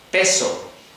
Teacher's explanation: las P's españolas que te puedan sonar a veces como B, porque no tienen la aspiración